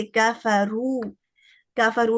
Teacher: کفرو کہتے نہیں چلے جانا, اس کو 2 حرکہ پہ روکنا ہے. تو یہ بھی الجوف سے ادا ہوتا ہے. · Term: واو مد